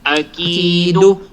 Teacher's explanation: mayroong stress sound sa ki dahil sa ya as sukun at dahil ang haraka ng kaf ay kasra. Kaya nagiging stress, nagiging prolong.